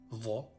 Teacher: La lettre Dha est un Dhal emphatique.